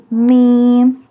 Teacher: Mim pronounced from the dry part of both lips.